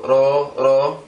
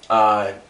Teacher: So the r here carries the innate ro sound. Alright, it'll pronounce like a R, like an English R, but it's a little bit more, carries some vibration into it.